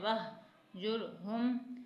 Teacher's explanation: ہا کو سینے سے ادا کرنا ہے